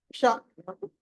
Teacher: షా నాలుక పైకి కొంచెం వంకర తిరుగుతుంది లోపల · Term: మూర్ధన్య షా